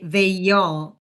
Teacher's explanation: They ends in E in this diphthong. So we don't say they all, which would sound very choppy, but we insert the Y. So we say they, y'all.